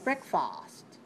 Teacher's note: that's very nice if you say breakfast my mouth open too much on the second syllable not far very small very small mouth on this unstressed syllable